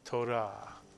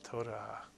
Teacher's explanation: Israelis tend to roll the R. Not quite like the French do, but a little bit.